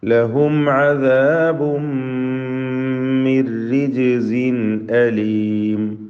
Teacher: അദാബുൻ എന്ന തൻവീനിനെ പൂർണ്ണമായും മീമിലേക്ക് ലയിപ്പിച്ച് മണിക്കണം. ഇത് ഗുന്ന കാമിൽ.